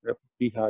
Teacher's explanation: ہا کے بعد الف مد ہے، تو وہاں دو حرکت ہوگی